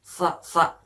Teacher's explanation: tengah lidah kita ditempelkan pada rongga mulut kita yang paling paling atas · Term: huruf Sin